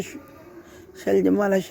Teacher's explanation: श जिसे व्यवहारिक भाषा में तालव्य कहा जाता है, इसीलिए कहा जाता है कि तालु से उच्चारित होता है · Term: तालव्य शकार